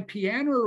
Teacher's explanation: she pronounces terminal vowels with an R like piano